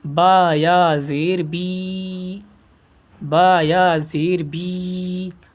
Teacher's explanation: سارے حروف کو ایک الف کے برابر کھینچ کر پڑھیں گے، ٹھیک ہے نا، کیونکہ حروف مدہ کو ایک الف کے برابر کھینچ کر پڑھا جاتا ہے۔